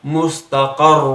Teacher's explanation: را حرف پر تھوڑی سی شدت ڈالنی پڑے گی کیونکہ وہ مشدد حرف ہے اور وقف بھی کرنا پڑ رہا ہے.